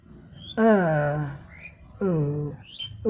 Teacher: ओ जब कहते हैं तो जीभ का पिछला भाग उठ जाता है।